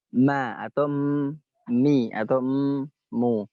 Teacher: Karena dia menggerakkan dua bibir sehingga mim itu berbunyi ma atau mi atau mu.